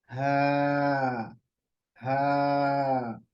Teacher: नहीं बल्कि नरम आवाज ला के आखरी हिस्से से हा हा आपका जो वोकल कट है वो खुलेगा तो आवाज आएगी और फिर हवा भी बाहर आएगी हा बहुत आसान है नरम आवाज है आहिस्ता से इसको अदा